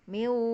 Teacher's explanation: Miu bulat monyong ya, karena wawu itu huruf monyong.